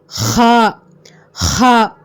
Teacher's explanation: அடித்தொண்டையிலேருந்து காரி சொல்லணும் இந்த ஹா. அப்போ இந்த ஹா வெளிப்படோட இடம் எது அப்படின்னா, நம்ம தொண்டை வார்த்தைகள்னு சொல்லுவாங்க, அதுலேருந்து இந்த ஹா வந்து வெளியாகுது.